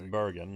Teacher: that R sound, that retroflex R, is not something everybody quite like